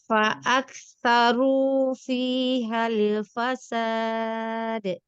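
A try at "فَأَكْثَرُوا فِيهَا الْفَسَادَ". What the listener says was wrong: Yang pertama, untuk huruf dal yang diberikan sifat qalqalah, jangan diakhiri qalqalahnya dengan hamzah. Al-fasad. Jadi semua huruf-huruf yang qalqalah jangan diakhiri dengan hamzah ya.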